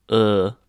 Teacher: a high back unrounded vowel it's made by placing your tongue as if you're saying ooh but with your lips unrounded as if saying ee